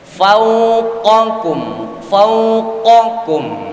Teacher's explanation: makhrajnya huruf qaf lebih atas